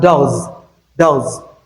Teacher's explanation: S becomes voiced after voiced.